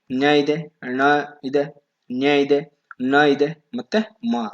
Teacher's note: ಅನುನಾಸಿಕ ಇಲ್ಲಿ ಮೂಗಿನ ಸಹಾಯದಿಂದ ಉಚ್ಚಾರಿಸುವ ಅಕ್ಷರಗಳು